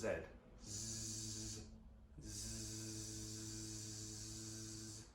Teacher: we're going to have the airflow going over the vocal folds, but now they're going to be coming together with a Z sound